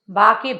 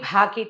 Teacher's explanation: బా అంటే అల్పప్రాణం, భా అనాలంటే మహాప్రాణ అక్షరాలు. మహాప్రాణ అక్షరాలని అవి గట్టిగా ఒత్తి అవతల వాళ్ళకి విసుగొచ్చేలాగా కాదు, లోపల నుంచి శబ్దం రావాలి. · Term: మహాప్రాణము